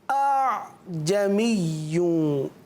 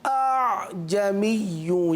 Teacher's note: یعنی دوسرے حمزہ کو ہم نے نرمی کے ساتھ پڑھنا ہے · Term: تسہیل